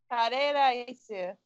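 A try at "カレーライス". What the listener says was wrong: There's no n at the end. Kareraisu.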